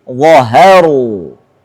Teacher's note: Diapit oleh dua yang tebal. Wa sama ra. Haknya harus tipis.